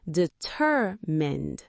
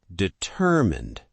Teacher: The stress moves to the 2nd syllable.